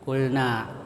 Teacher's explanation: itu bacanya ee panjang biasa ya, yaitu ee dua harakat atau satu alif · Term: mad thabi'i